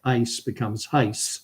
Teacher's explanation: newfoundlanders will sometimes put an H on words that don't have it